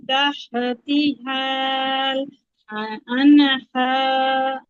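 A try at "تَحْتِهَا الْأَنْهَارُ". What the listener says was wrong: এখানে হাল টান দেওয়া লাগবে হাল আনহার।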